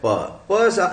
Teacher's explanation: प is phonetically described as पुल्मोनिक इग्रेसिव, फेफड़े से निकलने वाली, बाहर निकलने वाली, वॉइसलेस बाइलेबियल प्लोसिव. वॉइसलेस है क्योंकि इसमें वोकल कॉर्ड को ज्यादा काम नहीं करना पड़ता, और बाइलेबियल है क्योंकि दो होंठ से इसका उच्चारण होता है, और प्लोसिव है मतलब ये कि हम पूरी साउंड बंद करने के, पूरी हवा बंद कर लेते हैं मुंह में, उसके बाद में प का उच्चारण करते हैं.